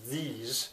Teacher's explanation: it's voiced it's not thieves it's these